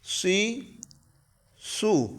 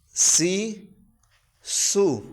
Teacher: اس میں صاد موٹا ہے، سین سیٹی کے ساتھ ہے، اس کا بھی لازمی فرق کرنا ہے، صاد کو موٹا کر کے پڑھنا ہے اور سین میں سیٹی کی آواز نکالنی ہے۔